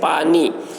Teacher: ایک الف کی مقدار وہی ہے جو اردو زبان میں ہے، جیسے پانی، کہ اس میں پا کو ایک الف کے برابر کھینچا جاتا ہے اور نی کو بھی ایک الف کے برابر کھینچ کر پڑھتے ہیں۔